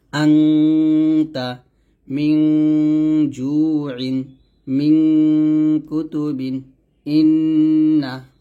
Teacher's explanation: নাকের পাশে থেকে আমরা গুন্নাটা উচ্চারণ করব